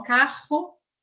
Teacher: nós fazemos esse som mais aí vibrante, por isso nós chamamos de vibrante múltipla